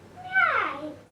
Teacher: the participant will omit the phone t, this time at the end of right